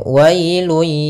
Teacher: ada bacaan Lin yaitu pada lafal wa ketemu dengan huruf Ya Sukun maka dia lembut dalam pelafalannya